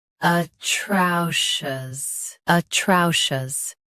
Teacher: Stress trow. Keep shus soft and clear.